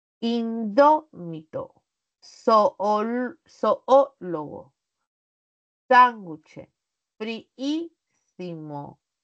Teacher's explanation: Estas tienen la mayor fuerza de voz en la antepenúltima sílaba. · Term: palabras esdrújulas